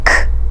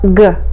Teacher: Next to the back of our mouth for k and its counterpart g.